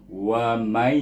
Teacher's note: Kita pergi kepada kalimah berikutnya bermula dengan, iaitu kalimah waman, bermula dalam ayat yang ke-14. Waman Nun sukun bertemu dengan ya, kita baca apa? Ya huruf idgham. Jadi kita baca dengan idgham ma'lunah 2 harakat.